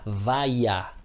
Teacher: Então no aspecto fonêmico, reparemos, temos a palavra vaia. Se vocês pronunciarem, tentem perceber que vai aparecer um i quando você pronuncia. Vaia. Repare que este i aparece. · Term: iode